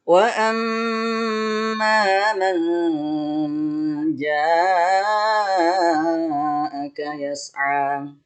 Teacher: Di wa amma man ja, nun mati ketemu ja, dibaca eng dan ditahan selama 3 ketukan. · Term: ikhfa